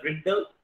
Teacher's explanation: in रिडल there must be श्वा before ल sound, but schwa has not been used